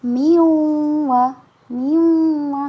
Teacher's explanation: huruf nun sukunnya sudah tidak dibaca lagi ketika bertemu dengan huruf ya dan waw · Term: dibaca dengung